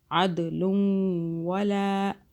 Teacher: دال پہ قلقلہ کیا، عین کو حلق سے